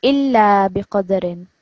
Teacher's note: So this lam, remember it's got a shadda. So when you join it, it's going to have extra emphasis on it.